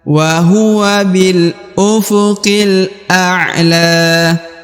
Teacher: A'la, huruf ain sukun, a'la. Huruf la dibaca dipanjangkan ya, karena di depannya terdapat alif kecil.